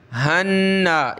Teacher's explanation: नून को एक अलिफ की लिमिट में खींचेंगे, गुन्ना करेंगे